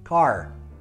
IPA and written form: kɑ:r (Car)